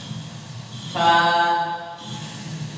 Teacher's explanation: makhrajnya dari ujung gigi seri atas bertemu dengan bibir bagian bawah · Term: huruf fa